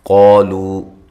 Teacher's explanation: قاف موٹا ہے، الف مدہ ہے، ایک الف کی مقدار کے برابر لمبا کریں گے۔ لو واو مدہ ہے، اس کو بھی ایک الف کی مقدار کے برابر لمبا کرنا ہے۔